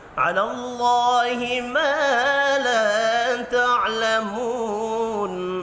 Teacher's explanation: 2 الف مدہ ہیں اور 1 واو مدہ، تینوں کو ایک ایک الف کے برابر کھینچ کر پڑھنا ہے۔